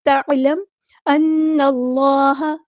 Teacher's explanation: نون کو ہم نے لام کے ساتھ ملا دینا ہے